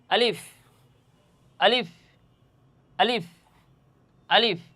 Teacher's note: এই আলিফ শব্দের মাকাম তথা মাখরাজ, তার উচ্চারণের স্থান হচ্ছে জৌফ তথা মুখের খালি জায়গা। মুখের খালি জায়গা হতে এই আলিফ শব্দটি উচ্চারণ হবে।